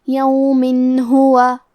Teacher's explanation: کلمت یومن کے آخری میں میم کے نیچے تنوین زیر ہے، پھر حرف الہا آتا ہے کلمت ہوا، ہا حروف الاظہار میں سے ہے اور اظہار کا معنی ہے ظاہر کرنا، اور کیونکہ تنوین کی اصلیت نون ساکن ہے تو ہم یہاں تنوین ظاہر کریں گے اور اسے نون ساکن پڑھیں گے اور بغیر غنہ سے یہ حکم کو ادا کریں گے۔ یومن ہوا، کلمت ہوا میں ہا پہ پیش ہے اور واو پہ زبر ہے تو ہمیں یہ دونوں حرکات کو ظاہر کرنا ہے۔